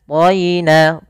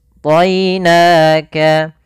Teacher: to-nya tebal, ya-nya tipis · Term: bacaan lin